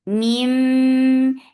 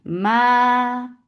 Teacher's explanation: when we are saying ma, it should be from your mouth, not from your nose.